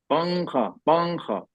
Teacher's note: ये नून तो जरूर है उसमें, लेकिन हमने हम नून नहीं पढ़ा कुछ, हाँ हाँ, हमने छुपा दिया नून को नाक में, डायरेक्ट हम नाक में आवाज ले जा रहे हैं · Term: इक्फा